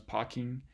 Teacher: Other changes, a kind of notable one, which is in a lot of these forms, is what happens to the consonant R. So in some cases, like in parking or scared, the R just disappears.